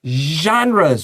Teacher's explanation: which is like /ʒ/, S-H 的發音，然後喉嚨要震動 (vibrate your throat)